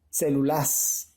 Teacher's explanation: la mayor fuerza de voz está en la antepenúltima sílaba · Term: esdrújula